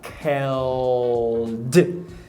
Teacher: Você vai fazer aquele L velar, ou seja, O, mais um D.